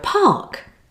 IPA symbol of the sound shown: ɑː